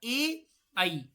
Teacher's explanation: देखिए कंठ भी निकलेगा और आपकी जिह्वा जो है वो तालु में भी स्पर्श करेगी